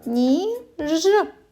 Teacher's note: звук н тому звук н в слові ніж м'який позначаємо двома рисочками